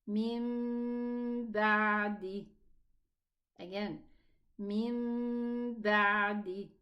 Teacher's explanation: So it's number 4, rule number 4, which is qalb. I'm going to pronounce the mim instead of the noon.